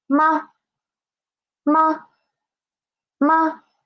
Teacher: It is a neutral tone. Neutral tone. So we should read it quick and soft, right? Quick and soft.